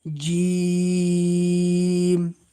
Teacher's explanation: অর্থাৎ সাদিদার হরফ শক্ত হবে এবং তিন আলিফ টান হবে। তিন আলিফ টান দিয়ে আমাদেরকে পড়তে হবে।